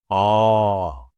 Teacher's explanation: ஒரு மாத்திரை நெ நெடிலுக்கு இரண்டு மாத்திரை டபுள் பி டைம் ஆ அப்போ ஆ என்ற எழுத்து அங்காந்தலால் பிறக்கும் வாயை அகலமாக திறப்பதால் பிறக்கும்